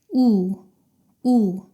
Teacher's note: 오의 입모양과 비슷하지만 턱이 조금 더 올라갑니다